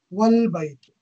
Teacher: Here, the A of al-baytu is pronounced, but if it is preceded by wa, meaning and, wa means and in Arabic, the A is dropped and the phrase is pronounced as wal-baytu. It is not pronounced as wa-al-baytu. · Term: hamzatul wasl